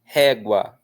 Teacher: Régua, a força está no ré.